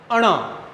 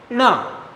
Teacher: आपकी जीवा ऊपर उठे, ण, ऐसे नीचे पटको, तब आप इसको बोल सकते हो